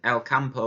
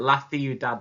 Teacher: With El Campo we said k, but with Ciudad it's a th sound.